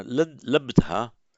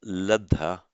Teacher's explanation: labdha becomes ladha in Pali, and indeed lubdha becomes ludha.